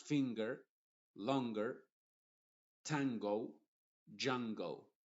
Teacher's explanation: Por ejemplo, cuando digo finger, en ese caso, la N sigue siendo nasal porque está antes de la G, pero la G está siendo pronunciada con el sonido de la G normal, que es el sonido de la palabra gato, por ejemplo. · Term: n nasal, N nasal